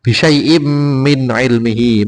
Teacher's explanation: Bisyai'im min ilmihi ini tanwin bertemu mim idgham bihuna. Jadi bacanya in menjadi im, masuk ke dalam masuk ke dalam mim.